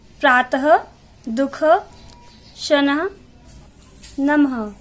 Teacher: इसका उच्चारण ह को हल्का सा झटका देकर किया जाता है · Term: विसर्ग